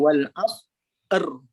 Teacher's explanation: Kita wujudkan getaran, kita adakan sifat bagi huruf ra.